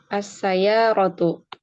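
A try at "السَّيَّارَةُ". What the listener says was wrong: Ya-nya bertasydid. Sinnya juga bertasydid karena huruf syamsiyah. Alif lam syamsiyah. As-sayyaratu.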